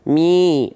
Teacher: mi-nya kita baca dengan kadar panjang dua harokat. Ya, dibaca dengan kadar panjang 2 harokat. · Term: mad tabi'i